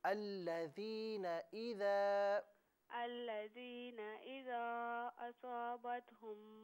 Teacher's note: अल्लज़ीना में जो नून है इसे खींचे नहीं